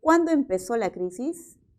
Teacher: se va a entender como una pregunta por la palabra cuando por lo tanto su tono final es descendente